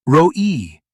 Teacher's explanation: The r sound at the beginning is a rolling R. It vibrates in the front of your mouth.